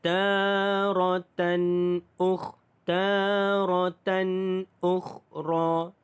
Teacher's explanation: tanwin bertemu dengan hamzah, jelas. Izhar halki, tidak ada dengung